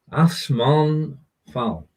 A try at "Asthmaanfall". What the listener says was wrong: You didn't put the break in the right place. So, Asthmaanfall.